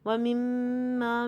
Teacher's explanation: وَمِمَّا میں دیکھیے خالی الف سے پہلے زبر، پہلے تو 2 کاؤنٹ کا غنہ کریں گے کیونکہ میم مشدد ہے، اور خالی الف سے پہلے زبر ہے تو اس لیے اس کو 2 کاؤنٹ تک لمبا کریں گے